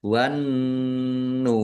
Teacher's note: Nun tasdid dibaca ghunah atau mendengung. Ditahan biar tampak mendengungnya.